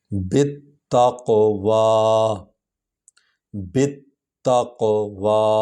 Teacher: با کو تا کے ساتھ ملائیں گے کیونکہ تا پر شد ہے